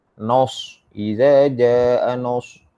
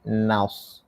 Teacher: Dia nak bagi sifat shot yang isti'la tu, tapi terpengaruh dia dengan ketebalan huruf shot sehingga kan fathah itu menjadi o, menjadi bunyi o. Nos salah, naus sepatutnya naus.